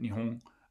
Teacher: in some cases it can be pronounced i guess as a uvular nasal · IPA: [nihoɴ]